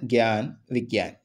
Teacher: മലയാളത്തിൽ അത് ഞ എന്നുള്ളതാണെങ്കിലും ഹിന്ദിയിൽ അതിന്റെ ഉച്ചാരണം ഗ എന്നുള്ളതാണ്